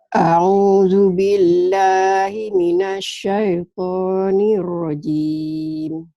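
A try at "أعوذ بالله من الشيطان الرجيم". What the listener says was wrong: Alifnya Maci, a'u, jangan au. Maci lupa, a'u, alif dan ain.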